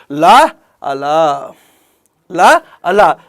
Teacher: ఇరు పక్కల నుంచి శ్వాస నిర్గమించడాన్ని ఏమంటామని అంటే పార్శ్విక ప్రయత్నం అంటారు · ఈ విధంగా పార్శ్విక ప్రయత్నం జరిగినప్పుడు పుట్టేటువంటి ధ్వనులు ల అల ల అల ల నేమో దంతమూలీయ పార్శ్వికం అని అంటాము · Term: దంతమూలీయ పార్శ్వికము